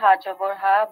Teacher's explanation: এটা হচ্ছে কণ্ঠনালীর থেকে, মানে প্রেসার দিয়ে।